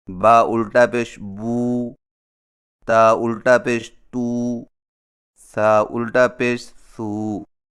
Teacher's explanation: الٹی پیش حرف کے اوپر قومے کی شکل کی مڑی ہوئی لکیر کو الٹی پیش کہتے ہیں، اور الٹی پیش ہونٹوں کو گول کر کے تھوڑا سا کھینچ کر پڑھا جاتا ہے، اور اس کی آواز کا رخ سامنے کی طرف ہوتا ہے، جیسے با الٹا پیش بو، تا الٹا پیش تو، سا الٹا پیش سو۔